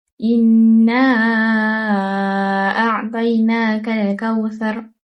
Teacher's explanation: terdapat nun syaddah iaitu mendengungkan bacaan sepanjang dua harakat · terdapat mad jaiz munfasil dengan memanjangkan bacaan dengan kadar empat atau lima harakat dan mad asli dua harakat.